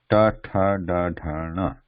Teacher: tip of the tongue slightly curved backwards, pressing the cerebral position in the mouth